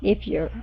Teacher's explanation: when you're saying the word if you're dropping the F